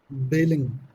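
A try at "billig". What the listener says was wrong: बिलिंग नहीं, इसको आप बिली कह लो या बिलिश कह लो। ज्यादातर लोग इसको जर्मनी बिलिश कहते हैं। बिली कह लो, बिलिश कह लो, दोनों ठीक है।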